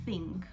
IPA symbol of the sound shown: θ